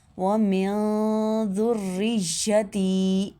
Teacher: ذال کو نرمی سے ادا کرنا، سیٹی کی آواز نہیں آنی چاہیے